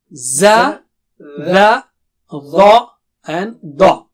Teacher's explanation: So, dha and da are very thick.